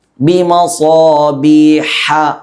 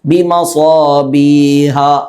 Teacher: ഹ പറയുന്നത് തൊണ്ടയുടെ നടുഭാഗത്ത് നിന്നാണ് അത് പുറപ്പെടേണ്ടത്.